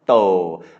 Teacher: because it's a mid-class consonant with a long vowel, a live syllable, that makes it mid-tone